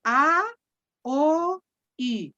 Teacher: Espérenme un poco. De la vocal más abierta, que es la A, a la vocal más cerrada, que es la I.